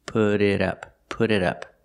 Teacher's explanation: The T in put changes to a fast D, put it, put it. And the T in it changes to a fast D, put it up, put it up.